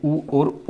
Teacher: ओष्ठ की सहायता से ऊ और ऊ बोले जाते हैं।